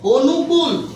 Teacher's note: অর্থাৎ আমি লিখেছি অ। কিন্তু আমি উচ্চারণ করতেছি ও।